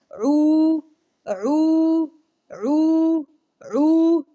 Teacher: اگر عو جو ہے یہ عین کا مخرج گلے کے درمیان والا جو حصہ ہے، درمیان والا پارٹ عو آپ کو گلے کے درمیان سے ادا ہونا چاہیے، اور مد کا خیال رکھیں